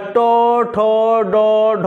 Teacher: সময় জীভের অগ্রভাব একদম মানে একদম উপরে যে শক্ত অংশটা রয়েছে দাঁতের গোড়ার যে মাংসটা রয়েছে তার উপরে যে শক্ত অংশটা রয়েছে ওখানেই কিন্তু উচ্চারণ হচ্ছে জীভের অগ্রভাগ ট ঠ ড উচ্চারণ হচ্ছে ওই শক্ত অংশটাই তাই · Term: মূর্ধার ধ্বনি